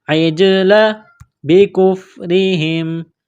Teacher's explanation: جیم ساکن ہے یہاں پر قلقلہ کریں گے